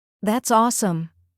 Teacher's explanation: If you want to show excitement, let your voice rise slightly.